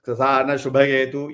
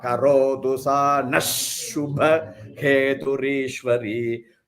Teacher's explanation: So that Visarga will become replaced by ish sound. So most important here is the ish sound.